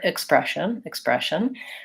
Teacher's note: the stress in expression is on the second syllable